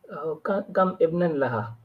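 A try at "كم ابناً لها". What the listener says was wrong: Kam ibnan laha. You combine it. You don't stop at kam and then say ibnan. You say kam ibnan. Kam ibnan.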